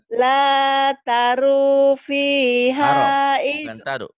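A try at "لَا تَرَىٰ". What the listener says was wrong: Bukan taru. La taro, bukan taru. La tara fiha iwaja.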